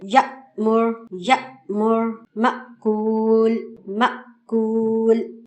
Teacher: हमजा साकिना को पढ़ते हुए हल्का सा झटका महसूस होता है। एक बिल्कुल लाइट जर्क हम महसूस करते हैं।